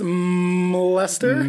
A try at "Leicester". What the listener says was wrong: No. No. No, you can't pronounce the M. So it's Leicester.